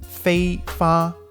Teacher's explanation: the words fei, fa are actually in the highest tone bracket in Cantonese, meaning once you've said the word fei, you can't follow it up with any other word that goes higher.